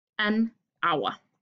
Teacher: udtales det altid med en vokal fordi H er stumt